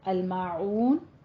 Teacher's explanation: ما منہ کھول کے ادا کرنا ہے، الف مدہ ہے، اور عون کو وسط حلق سے ادا کرنا ہے